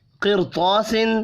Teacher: ان 7 میں سے کوئی بھی ایک حرف آئے را ساکن کے بعد اسی کلمے میں تو را کو پر پڑھنا ہے، جیسا کہ قرطاس زیر ہونے کے باوجود را ساکن حروف مستعلیہ کی وجہ سے پر پڑھا جا رہا ہے